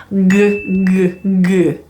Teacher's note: If you use the G sound, you can actually feel the back of your tongue touching the soft palate.